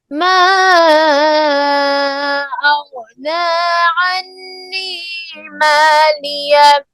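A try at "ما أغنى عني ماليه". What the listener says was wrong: अन्य के ऊपर गुन्ना भी है ना फिर पढ़िए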